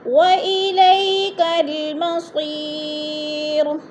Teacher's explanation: مصیر، یا ساکن سے پہلے صاد کے نیچے زیر ہے تو یا مدہ کو ایک الف دو حرکات کے برابر کھینچ کر پڑھنا ہے